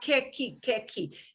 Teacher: Here is one of the very few, very limited situations where the u will not sound like u. The u will go silent.